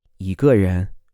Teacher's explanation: the tone of the e changes to a second tone in this case even though it's written with the first tone